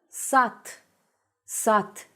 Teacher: it's a thing in Russian and most other modern Slavic languages called final unvoicing or devoicing when instead of a written voiced consonant you pronounce it's uh